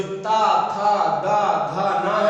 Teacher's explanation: जो ता था दा धा ना है, आप बोलिएगा वहां पर क्या होता है, जीभ जो है इन ता वर्ण को बोलने के लिए जो जिह्वा है वो दांतों को छूती है, इसीलिए उनको कहा जाता है दंती या दंत व्यंजन कहते हैं।